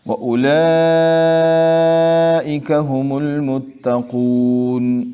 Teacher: اولئک میں نے اس لیے زیادہ پڑھا، مد لازم ہے، اس کو کم از کم 3 الف کے مقدار پڑھنا ہے